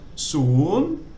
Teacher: it begins with so sala, which is one of the high class S consonants. So that means it has a rising tone.